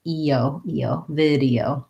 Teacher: first syllable stress, and vowel, lax vowel, and then we have a tense E and diphthong O